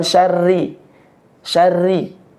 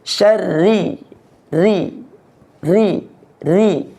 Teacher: huruf ro tasdid ya setelah kita masuk di dengung minyarri syarri tipiskan ya pembacaan hurufnya itu ditipiskan